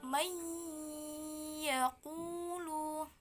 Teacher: dia harus dengung, bunyinya di hidung, jadi dia harus dengung. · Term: idgham bil gunnah